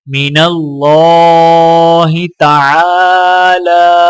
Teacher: اللہ کے لام کو موٹا پڑھا جائے گا اور لام کے اوپر کھڑا زبر ہے تو ایک الف کے برابر کھینچ کر پڑھا جائے گا۔